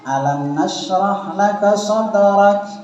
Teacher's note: Jadi kaf itu punya sifat al-hams, artinya mengeluarkan desis.